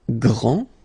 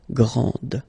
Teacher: this final d is not pronounced